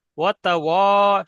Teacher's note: শুধু ওয়াও টান হবে, এখানে ওয়াও মাদ্দা আছে, ওয়াও টান হবে